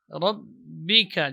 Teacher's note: Ba ini keluar dari dua perut bibir bagian luar. Rabbika, jadi rapatnya bibir ini lebih kuat dibandingkan pengucapan huruf mim.